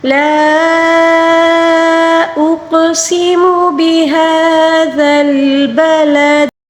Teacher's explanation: لام کے اوپر مد منفصل ہے، اس کو 3 الف کے برابر کھینچ کر پڑھنا ہوگا